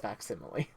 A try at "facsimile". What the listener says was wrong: Facsimile. I don't think you pronounce the C.